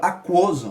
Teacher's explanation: Por exemplo ali, ó, aquoso, a gente vê que esse U, ele é menor que o O. Aquoso, se destaca o O, e o U ali, ele não aparece tanto quanto o O. Por isso que a gente chama de crescente, porque ele é uma semivogal e cresce para uma vogal, ó. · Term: ditongo crescente